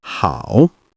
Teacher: Notice the slight dip in your tone. It's also a third tone.